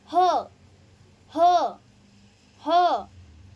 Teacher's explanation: ह, तो देखो ना, हमारे कंठ में हम वाइब्रेशंस फील करेंगे, तो ह स्थान का उच्चारित होता है कंठय में